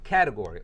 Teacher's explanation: the T sort of becomes a light D sound